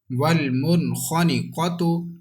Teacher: That's why there is har without gunna. Qaf is musta'aliya. We have to read with thicker voice.